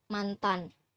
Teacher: nasal alveolar yang berbunyi neh. Neh merupakan bunyi bersuara